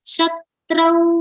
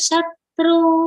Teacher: the vowel sound of au has come here on tra do not pronounce as shatru shatrau cha mitre cha tatha manapamanayo